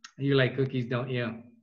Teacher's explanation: if it goes down i'm confirming that i know that right